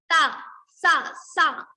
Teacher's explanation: So one is dantya sa. When we use our teeth to pronounce this sa, it is called dantya sa.